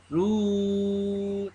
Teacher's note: Mulut ru kena mucung. Panjang mucung. Suk hujung mucung.